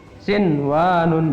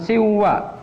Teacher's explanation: Dibacanya tetap idhar, artinya dibaca tetap jelas n-nya.